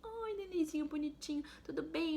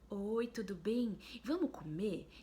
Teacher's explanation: você já usa uma outra entonação, você já tá querendo ser mais interativo, tá usando uma voz já que não é tão fina